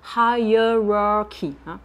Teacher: Là, on a 2 fois le son schwa.